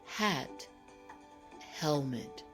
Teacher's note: remember the H makes this aspirated sound meaning it has a little air with it